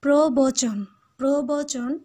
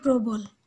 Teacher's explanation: উপসর্গের পরবর্তী অ এর উচ্চারণ ওকারান্ত হয় না। ওকারান্ত হয় না মানে এটা স্বরের মতো হবে, এটা বিবৃত উচ্চারণ হবে। আর এখানে উপসর্গের কথা বলা হচ্ছে, উপসর্গ তোমরা জানো, উপসর্গ হচ্ছে কোনো শব্দের আগে বসবে বর্ণ বা বর্ণ সমষ্টি।